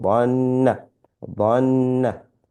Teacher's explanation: we have to read this with غنة because it's a noon with mushadda